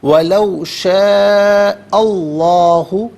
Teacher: یہاں ما قبل حمزہ پر زبر ہے تو اس میں اللہ کی حرف لام کو پر کر کے پڑھا جائے گا.